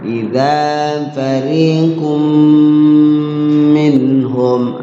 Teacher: matobi fariqun ketemu mim idgham bi gunnah ya tanwin ketemu mim cara bacanya dimasukkan tanwinnya ke mim kemudian di mimnya ditahan jangan terburu-buru